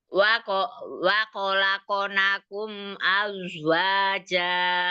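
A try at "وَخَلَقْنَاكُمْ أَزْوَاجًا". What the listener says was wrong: Pakai kho, bukan pakai ko. Wakho.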